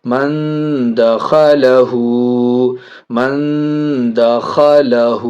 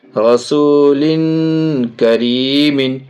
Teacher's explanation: ناک میں آواز چھپا کر کے پڑھیں گے